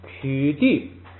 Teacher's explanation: 后边的曲要变成不送气